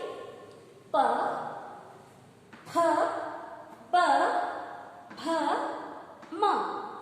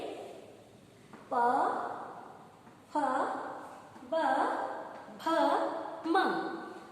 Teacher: आपके होंठ आपस में एक दूसरे से मिलते हैं। ऊपर और नीचे के जो होंठ हैं ये एक दूसरे से मिलते हैं। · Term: ओष्ठक